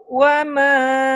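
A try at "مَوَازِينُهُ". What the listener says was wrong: Terbalik. Mawa, Mawa. Mawa. Mawazinu.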